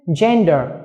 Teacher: Gender, trọng âm và âm tiết thứ nhất